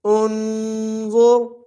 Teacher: زا موٹا، را بھی موٹا پڑھا جائے گا